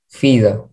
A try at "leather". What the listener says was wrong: you got it, but it's not an F, it's an L. You love your L's, right?